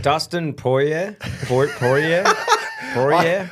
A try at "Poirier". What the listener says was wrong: you're saying Hoyer. With a P.